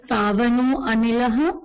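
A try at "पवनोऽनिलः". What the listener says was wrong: Pavano nilaha. Do not stop, do not pronounce a separately, do not pronounce a separately while reciting the shloka. Yeah, everywhere there is avagraha chinna.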